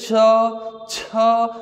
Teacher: बाहर आएगा तो इसको कहते हैं स्पर्श संघर्ष संघर्ष करते हुए वायु बाहर स्पर्श करते हुए संघर्ष करते हुए बाहर निकलती है तो च वाला जो वर्ग होता है वह होता है स्पर्श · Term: स्पर्श संघर्षी व्यंजन